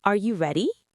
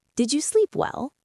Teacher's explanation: Let your voice rise at the end. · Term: rising intonation